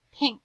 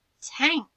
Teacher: got your tongue in the roof of your mouth and then you make that c sound at the end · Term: ink blend